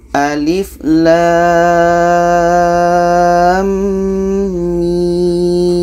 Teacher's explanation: Maka di sini harus kita dengungkan. Lam ini kita panjangkan 6 harkat. Setelah itu di tengah-tengahnya dengung 2 harkat. Dan setelahnya ada mim 6 harkat. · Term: idgham mislan